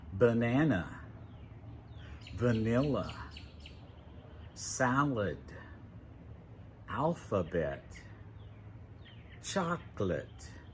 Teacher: the unstressed sound is frequently pronounced 'uh'. It's shorter. Sometimes it's kind of like a lazy sound. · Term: schwa